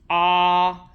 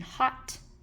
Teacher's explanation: Our low back vowel is going to be Ah, which we hear in hot.